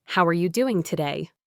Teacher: Listen to how are you often blends into are ya, and doing can sound like doin'.